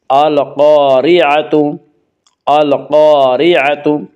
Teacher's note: القاریعۃ کی را کو باریک پڑھیں گے، اس کا قاعدہ ہے کہ را کے اوپر زبر اور پیش آئے تو را کو پر پڑھا جائے گا، را کے نیچے زیر آئے تو را کو باریک پڑھا جائے گا، یا را کے نیچے زیر سے را کو باریک پڑھیں گے۔